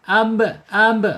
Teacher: ketika diucapkan dan ada harokat sukun ya, sifat yang tidak berlawanannya qalqalah ya, qalqalah mantul. · ba mempunyai makhraj asy-syafatain, 2 bibir ya, terkatup ba ya. Kemudian secara sifat ada di asyidah ab itu ya, sukun, disandarkan dengan huruf lain ya, kalau sendiri nggak bisa.